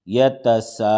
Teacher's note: یہ مد متصل ہے، اس کو 5 الف کے برابر کھینچ کے پڑھیں گے